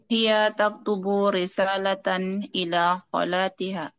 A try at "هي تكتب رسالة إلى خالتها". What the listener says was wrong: Kho panjang, Om.